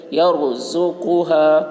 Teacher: زا کے اوپر پیش ہے، پیش کو جلدی پڑھیں، تھوڑا بھی نہ کھینچیں، معروف پڑھیں، مجہول آواز سے بچے